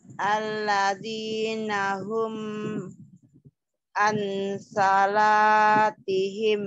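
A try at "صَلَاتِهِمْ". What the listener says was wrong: Bukan an salat, an sholat. Salat, jangan salat, sholat.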